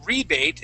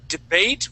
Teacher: a debate would have the accent at the end, but rebate is at the beginning.